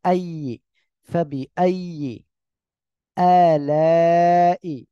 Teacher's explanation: ফাবি আইয়ে এখানে কোনো জায়গায় টান নাই, হামজাটা শক্ত হবে। আইয়ে, ফাবি আইয়ে আলাই, এখানে এক আলিফ, এখানে চার আলিফ টান।